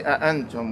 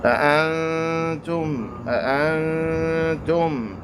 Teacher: the noon is pronounced with the nasality, with the tongue lowered. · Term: Ikhfa